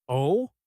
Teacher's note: If your voice goes up at the end, like a question, oh, it means surprise. Or, I am confused.